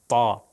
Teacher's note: یہ موٹا ہے، یہ کہاں سے ہوگا کہ پیچھے زبان کو، پیچھے والا جو زبان کا حصہ ہے وہ تھوڑا سا اوپر لے کر جایا جائے گا